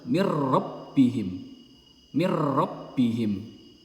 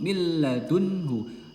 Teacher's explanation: Nunnya melebur dan masuk ke huruf lam tanpa digunnahkan. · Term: idgham bila gunnah